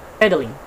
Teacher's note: in the word of pedaling, we can stress the first syllable of this word